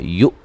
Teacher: حمزہ کو جھٹکے سے ادا کریں گے